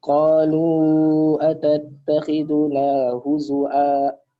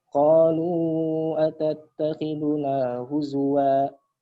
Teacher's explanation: Bacanya pakai hamzah, Ustaz. Jadi wawnya diganti pakai hamzah. Jadi huzu'a gitu, Ustaz.